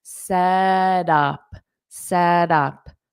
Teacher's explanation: this T can be pronounced as a soft D and linked to the up